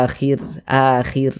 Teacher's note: huruf ro sukun sebelumnya harakat kasrah maka huruf r-nya dibaca tipis baca tarkik ini kita baca Akhir akhir seperti itu tipiskan huruf rnya Terima